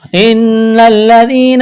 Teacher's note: نون مشدد ہے، آواز ناک میں چھپائیں گے، غنہ کریں گے ، نون کو لام کے ساتھ ملانا ہے، لام میں سختی